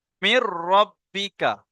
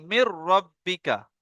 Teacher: মিম রজের মির, এখানে নুনটা আর পড়া হবে না। নুন সাকিন যেটা আছে ওটা পড়া হবে না, কারণ নুন সাকিনের পরে র এসছে। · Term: বেলা গুন্না